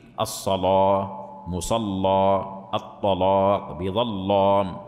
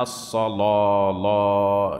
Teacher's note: الالف المفخمه وهي الف يخالط لفظها تفخيم يقربها من لفظ الواو